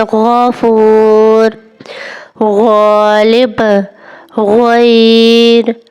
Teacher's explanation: غین میں منہ نارمل کھلا رکھیں گے اور گلے کے اندر سے آواز کو بھاری انداز میں نکالیں گے، جیسے غین۔ مثال کے طور پر جیسے آپ نیم گرم پانی کے غرغرہ کرتے ہیں تو جو آواز آتی ہے وہی غین ہے، جیسے غرغرہ کرتے ہیں۔ · حرف غین بھی حلق کے اوپر والے حصے سے ادا ہوتا ہے، لیکن اس میں آواز بھاری اور گونجدار ہوتی ہے